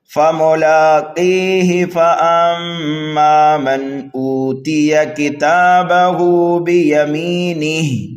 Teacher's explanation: ہم قاف کو یا مدہ کی وجہ سے 1 الف کے برابر کھینچ کر کے پڑھیں گے اور ہا کو جلدی پڑھیں گے